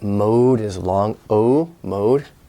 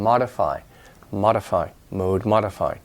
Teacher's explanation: mode is long Oh mode but it becomes short and modify